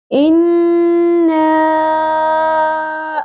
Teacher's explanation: سب سے پہلے ہمارے پاس یہاں پہ ہم نے دیکھنا ہے کہ نون مشدد آ رہا ہے، تو یہاں پہ ہم نے آواز کو ناک میں ٹھہرانا ہے، غنہ کرنا ہے۔ اب زبر کے ساتھ الف ہے، حرف مدہ ہے۔